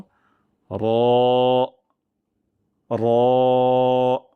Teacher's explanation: এখন আমরা মোটা করে উচ্চারণ করব র যেন ঠোট গুল না হয়ে যায়